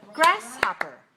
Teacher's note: there are three syllables and the stress is on the first syllable